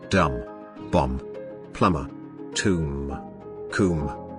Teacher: The voiced bilabial plosive, bu, can be so weakly articulated in some words that it is barely perceived.